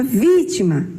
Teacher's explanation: Sua sílaba mais forte é o vi.